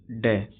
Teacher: मूर्धन्य अल्पप्राण घोष व्यंजन वर्ण